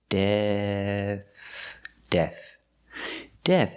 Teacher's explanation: we finish with a soft th sound like think and thank you · a voiceless th it's just air F so we start with a D with the tongue back